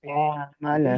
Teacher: হামজা হা গলার শুরু, আইন হা গলার মাঝখান।